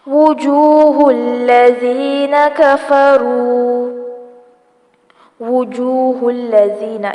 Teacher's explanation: واو کی پیش کو زبر نہیں پڑھنا، ہونٹوں کو اچھے سے گول کریں گے۔ لذین زال کو نرمی سے پڑھا جائے گا۔